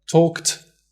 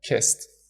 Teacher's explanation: when a verb in its infinitive form ends in an unvoiced consonant sound, we pronounce the ed as t.